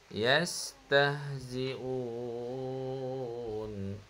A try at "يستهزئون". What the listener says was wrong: Jangan tekan lah ha bulat tu.